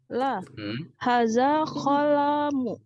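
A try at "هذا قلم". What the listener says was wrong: Qalamun. Tanwin semua, Bu ya, kata saya.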